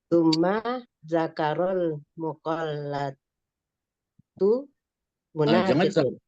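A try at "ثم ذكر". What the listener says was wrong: Jangan zakaral, kan nggak ada alif lam itu.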